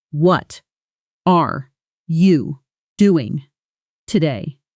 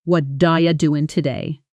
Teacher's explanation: The T in what softens into almost a D sound. Are you collapses into IA and doing loses its full G ending. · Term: connected speech